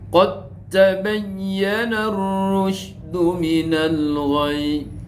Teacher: itu tadi dal ketemu ta harus dimasukkan sama ta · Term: idgham mutajanisain